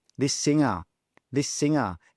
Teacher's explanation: We've got two s sounds next to each other. So we simply say one.